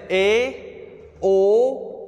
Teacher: अर्ध विवृत स्वर ऐसे स्वर जिनका विवृत स्वर की तुलना में थोड़ा कम खुलता है। जैसे ए, ओ, देख रहे हैं ना।